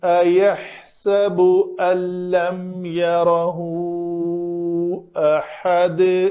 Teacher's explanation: تو یہ یارہ ہا ضمیر کا ما قبل متحرک ہے، ما بعد بھی متحرک ہے، تو یہاں پہ اس کو کہتے ہیں جی مد صلہ کبریٰ، بعد والا متحرک حمزہ ہے تو اس کو ذرا لمبا کریں گے